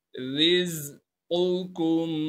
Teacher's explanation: यहाँ पहला कॉफ मोटा है और दूसरा बारीक है